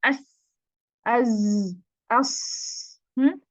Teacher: آپ کی زبان کی نوک کا آخری حصہ, اس کی انتہا جس کو کہتے ہیں منتہا, وہ لگتی ہے آپ کے نیچے والے 2 دانتوں کے اندرونی حصے پہ. مخرج تنگ ہو جاتا ہے, مطلب آواز اس میں سے پھر ہمیں کیا کرنا, تنگ راستے سے گزرتے ہوئے پھر اس میں حرف میں ایک تیز پیدا آواز ہوتی ہے, اور اس آواز کو ہم کہتے ہیں جی صفیر.